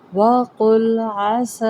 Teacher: قوف مستعلیہ لام کے ساتھ ملائیں گے تو لام کو موٹا نہیں کرنا، قوف کو موٹا کرنا ہے۔ وقل عسیٰ، یہ دیکھیں یہ نا تھوڑے ٹیکنکس بات ہوتی ہیں کہ کہیں پہ زال آ رہا ہے تو ساتھ میں پر حصہ آتا ہے، تو ہم غلطی سے اس پچھلے حرف کو بھی موٹا کر دیتے ہیں۔